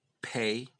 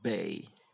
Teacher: P is bilabial plosive but voiceless and b is voiced